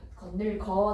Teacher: 디귿이 니은을 만나서 나도 그럼 비음으로 바뀔래 하는 거예요.